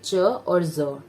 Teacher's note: plosive में आपका suddenly होता है, बट इसमें आपका स्लोली होगा और हल्का सा फ्रिक्शन भी होगा